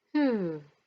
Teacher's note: intonation that starts high and goes low